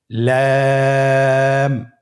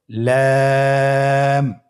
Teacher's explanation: লাম হরফটির মাখরাজ হলো জিহ্বার আগার কিনারা উপরের দাঁতের মাড়ির সঙ্গে লাগিয়ে উচ্চারিত হয়।